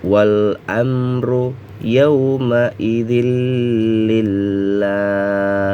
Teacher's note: Panjangnya lah di sini boleh 2, boleh 4, boleh 6 harokat ya.